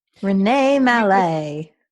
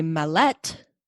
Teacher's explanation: You could say Mallette. Put the emphasis on the second syllable instead of the first one.